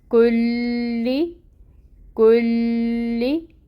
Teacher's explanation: لام پہ time taking ہوگا، کلی کلی، لام کے نیچے زیر کی حرکت باریک ہے، لام باریکی سے ہی ادا کریں گے اور زیر کی حرکت کو پڑھیں گے 1 کاؤنٹ.